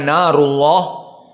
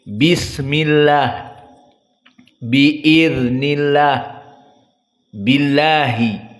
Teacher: Maka lafdul jalalah Allah mufakhamahnya narullah, adapun muraqqaqahnya dibaca lah, seperti bismillah, biiznillah, billahi.